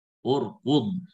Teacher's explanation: ra sukun sebelumnya hamzah wasal dhamma, maka di sini tebal